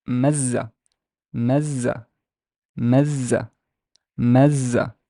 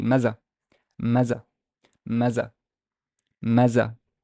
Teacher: In contrast to mazza, mazza, I double the z sound.